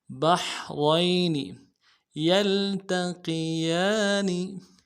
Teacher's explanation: مرج مرج البحرين، بحرين، با کو حا کے ساتھ ملانا ہے، حا کو گہرائی سے ادا کریں گے، را کو یا کے ساتھ ملانا ہے، را کو موٹا کریں گے، یا لین ہے بغیر کھینچے پڑیں گے، نون کو نرم سے ادا کریں گے۔ بحرين يلتقيان، یلتقیان، یا کو لام کے ساتھ ملانا ہے، تا کو نرم سے ادا کرنا ہے، قوف کو موٹا ادا کرنا ہے، یلتقی، قی، یا کے اوپر کھڑا زبر ہے، ایک الف مقدار میں کھینچیں گے، نون کو نرم سے ادا کریں گے۔